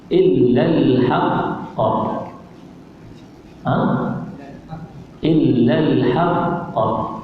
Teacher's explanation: Dia lambat sikit lantunan dia. Lantunan dia lambat sebab namanya qalqalah kubra.